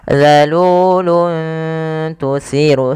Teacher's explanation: samarkan suara tanwinnya kepada huruf ta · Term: ikhfa